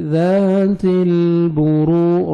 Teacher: تا کو باریک پڑھیں گے، لام کے ساتھ ملائیں گے